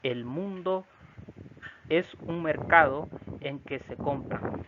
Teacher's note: la vocal situada al final de una palabra se une con la vocal inicial de la siguiente palabra ambas vocales se cuentan como una sola sílaba métrica acortando el verso ejemplo el mundo es un mercado en que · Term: sinalefa